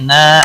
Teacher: الف مدہ ہے ایک الف کے برابر کھینچ کر پڑھیں گے